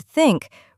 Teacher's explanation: the TH sound in the word think requires the tongue to be placed between the teeth. Many learners find this position unusual and therefore pronounce the sound incorrectly.